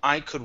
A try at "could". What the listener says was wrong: Could instead of an oo, open your mouth more.